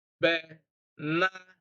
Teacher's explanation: Stress is on na, the middle na